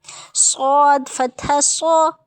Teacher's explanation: صاد حروف مستعلیہ سے تو دیکھ لیا، لیکن اس کی ایک اور بھی ہے کہ یہ سیٹی والا حروف ہے، وہ انشاءاللہ میں آپ کو کروا دوں گی انشاءاللہ بہت جلد. صاد حروف مستعلیہ سے بھی یعنی موٹا حروف بھی ہے، اس کے ساتھ سیٹی بھی آئے گی